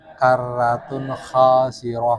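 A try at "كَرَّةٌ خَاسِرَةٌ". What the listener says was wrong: Rohnya pertebal rohnya. Panjang apa pendek rohnya? Pendek.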